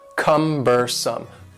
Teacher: the word cumbersome has three syllables and the stress is on the first syllable